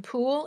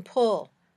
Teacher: when you say both these sounds your tongue is high in the back of your mouth